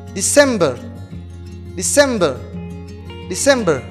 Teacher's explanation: it's like november the stress is in the second second syllable